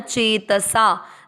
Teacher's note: च पर ई की मात्रा चे दीर्घ करना है, त में अ मिक्स करना है, चेतसा, सा भी दीर्घ होगा, चेतसा।